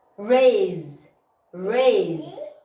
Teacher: S between two vowels, so we are going to pronounce it z